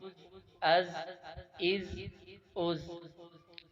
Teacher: زا حروف صفیریہ میں سے ہے، یعنی ان حروف پر سیٹی مار کر پڑھنا ہے